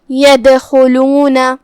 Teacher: خا کی ادائیگی حلق کے اوپر والے حصے سے ہے. خا حروف تفخیم میں سے بھی ہے، ہم اسے بھاری آواز میں پڑھیں گے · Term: حرف الخا